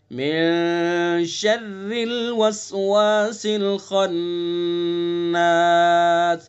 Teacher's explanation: शर्री के रा को बारीक करेंगे, शर्री नहीं पढ़ेंगे, शर्री, बहुत से पढ़ देते हैं शर्रिल वसवास, शर्रिल, ये गलत है, बिल्कुल नरमी से बारीक करेंगे।